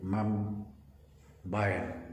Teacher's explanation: kalau konsonan misalnya ma tambah kata yang berfonem awal voice plosive bilabial b, dia menjadi mam bayan. Jadi mam berubah, ma menjadi mam, b tetap tidak berubah sama sekali.